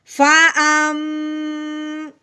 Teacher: حمزہ میم زبر ام، ہم نے منہ بند کیا، آواز کو ناک میں سے نکالا، کیسے؟ فا ام، ٹھیک ہو گیا۔ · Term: غنہ